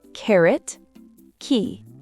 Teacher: Le cas se fait au fond de la gorge bien sec et expulsé. En anglais, ce son est fortement aspiré au début d'un mot ou d'une syllabe accentuée.